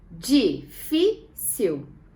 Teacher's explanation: a penúltima sílaba da palavra difícil tem um acento e é uma sílaba tônica né que tem o som mais forte